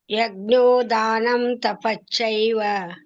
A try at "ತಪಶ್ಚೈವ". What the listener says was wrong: ನೀವು ತಪಶ್ಚೈವ, ಒಮ್ಮೆ ಚ ಬರಲ್ಲ, ತಪಶ್ಚೈವ ಆಗಲ್ಲ, ತಪಶ್ ಬರುತ್ತೆ. ತಪಶ್ಚೈವ, ತಪಶ್ ಹೇಳ್ಬೇಕು, ಆಮೇಲೆ ಚ ಹೇಳ್ಬೇಕು.